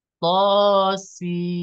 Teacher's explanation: Jadi panjangkan dulu suara si-nya, baru setelah sampai panjang 6 harokat, baru masuklah ke suara nun sukun